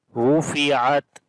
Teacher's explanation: Ra we read in heavy sound due to dhamma on it. On the ta also we make the stop, and then we make shiddat and hams quality as well.